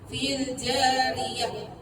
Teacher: Suara pastikan lepas sebab sifat rakha rakhawah ataupun rikhwin kan.